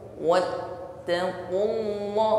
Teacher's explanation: ketika menekan pada huruf ta, maka ada aliran suara yang tertahan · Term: syiddah